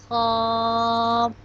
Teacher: خا حلق کے پہلا حصہ سے ادا ہوگا جو کہ منہ کی طرف ہے، اور اس کو بھی ہم ایک الف کے برابر لمبا کرتے ہیں، خا۔